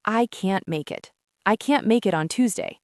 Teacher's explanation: When native speakers say cannot quickly in a sentence, they usually contract it to can't, but we don't usually hit that strong T sound at the end of the word